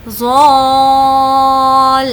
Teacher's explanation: اور کھینچتے ہوئے ہمیں لام کو اس میں ملانا ہے کیونکہ لام پر تشدید ہے. تو جس بھی لیٹر پر تشدید ہوتا ہے اس کو ہم 2 بار پڑھتے ہیں، ایک بار پہلے والے سے ملا کر اور ایک بار خود سے. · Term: مد لازم